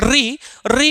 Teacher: री बोलने में थोड़ा हमारी जिह्वा में कंपन होता है, इसलिए इसका उच्चारण स्थान क्या हो जाता है, मूर्धा हो जाता है।